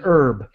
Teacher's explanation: we do not pronounce the h that is an herb